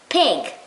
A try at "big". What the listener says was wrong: it's not pig with a p it's a letter b